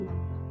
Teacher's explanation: अंक की मात्रा गले और नाक दोनों से बोली जाती है, इसीलिए इसे हिंदी में अनुस्वार भी कहते हैं, जैसे अंक।